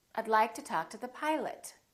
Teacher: the o in pilot becomes uh